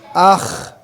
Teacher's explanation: hurufnya secara makraj adnal halq ada di tenggorokan bagian atas itu adnal halq secara sifat dia memiliki sifat alistil naik langitnya